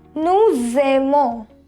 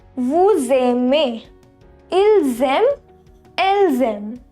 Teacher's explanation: in nous, vous and il, elle form, when there is an s, we have a liaison sound z